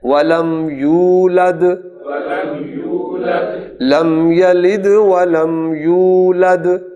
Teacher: دال جب سائلنٹ ہوگی تو قلقلہ ہوگا، لہذا تمام دال پر قلقلہ ہوگا